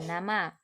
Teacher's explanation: ujung lidah sebagai artikulator menyentuh kaki gigi atas sebagai titik artikulasi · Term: bunyi apiko alveolar